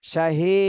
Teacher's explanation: শাহী হিতে এক আলিফ টান দিতে হবে